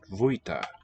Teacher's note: Spelled F, that's a V, voiced sound. Vuita. Because it's in a phrase, it's preceded by E, I vuita.